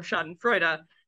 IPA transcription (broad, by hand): ˈʃa.dənˌfɹoɪd.ə